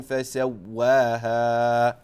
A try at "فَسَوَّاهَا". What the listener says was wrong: But just complete the ha, so you're cutting the ha short.